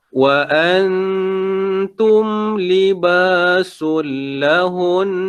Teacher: Dia kena panjangkan dulu 2 harakat sebab atas huruf nun ada tanda sabdu.